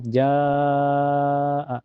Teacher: Cara bacanya panjang bisa 4 sampai 5 harakat. Jadi hukumnya mad wajib muttasil.